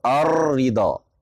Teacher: را میں صفت تکرار کی مطلب یعنی مکرر ہونے کی صلاحیت ہے، جیسے آپ بولتے ہیں الرضا، الرضا، اگر آپ را پر زیادہ زور دے دیتے ہیں تو الرضا، کئی رائیں ادا ہو جاتی ہیں، اس وجہ سے اس سے احتراز ممکن ہے، صفت تکرار پائی جا رہی ہے اس کے اندر۔